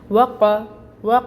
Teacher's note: وا پہ ہم اپنے ہونٹ گول کریں گے اور پھر فتحہ کو ادا کرنے کے لیے منہ اوپر کی طرف کھولیں گے اور 1 کاؤنٹ حرکت پڑھیں گے۔ قوف ہے، قوف بھی موٹا ہوتا ہے، اس کو بھی پر کر کے پڑھیں گے اور اس کے اوپر زبر کی حرکت ہے، 1 کاؤنٹ ہی پڑھا جائے گا۔